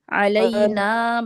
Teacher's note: الف مدہ ہے علینا ٹو کاؤنٹس کو لمبا کریں گے